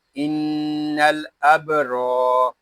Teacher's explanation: را کو ہم ایک الف تک کھینچ کر پڑھیں گے کیونکہ یہاں الف مدہ ہو رہا ہے۔ را کو پر پڑھیں گے کیونکہ را کے اوپر زبر آ گیا ہے۔